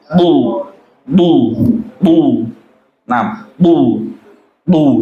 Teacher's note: Jadi lidah kita tempelkan ke langit-langit atas ya. Langit-langit bagian depan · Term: huruf Do